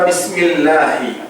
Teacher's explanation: ஹம்ஸும் ஹாவும் ஆரம்ப தொண்டையில ஆரம்ப பகுதியிலிருந்து அதனுடைய உச்சரிப்புகள் வெளியாகும்